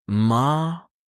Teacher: tone three down then up. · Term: Tone 3